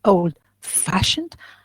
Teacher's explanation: When I say old fashioned, so that's clear that fashioned is more stress or is stress, and the old is not.